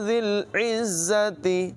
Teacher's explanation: زال جو ہے اس کی آواز میں سیٹی پیدا نہیں ہوئی اور زا جو ہے اس کی آواز میں سیٹی ہوگی۔ ذی العزت، یہ والی آواز اس میں پیدا ہوگی اور عین کی آواز حلق کے درمیان والے حصے سے نکالیں گے۔